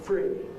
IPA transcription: friː